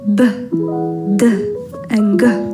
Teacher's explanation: Voiced stops as b, d, and g.